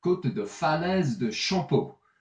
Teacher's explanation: But in this case, because we have a vowel after the P, we pronounce the P